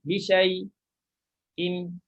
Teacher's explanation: bila kita nak buat saktah, kita jangan panjangkan syai'. Dia dah jadi macam mat dah.